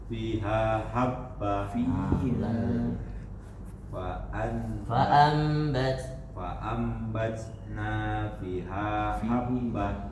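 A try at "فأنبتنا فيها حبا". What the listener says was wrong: Fiha. Dua-duanya panjang. Coba penggal-penggal. Fa'ambatna fiha habba. Jangan disambung, penggal-penggal aja biar nggak bingung.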